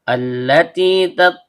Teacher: Terdapat hamzah wasal yang terbaca a karena kita memulai bacaan atau ibtida sehingga keluar dari tenggorokan bagian bawah. Kemudian hukum alif lam syubbiha bisyamsiyah karena lamnya langsung bertasydid. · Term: hamzah wasol